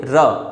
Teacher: आपकी जीभ जो है ऊपर मूर्धा से टकरा कर उसे नीचे की ओर झटके से लाती है और वो लुढ़का देती है उस व्यंजन को, इसलिए उसे हम लुंठित व्यंजन कहते हैं।